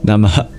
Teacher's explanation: And Namah has a very special phonetic feature at the end called a visarga, and it's literally an expulsion of breath. That's why you hear almost a hiccup or a cough at the end. Namah. Because you give your breath to what you're giving salutations to.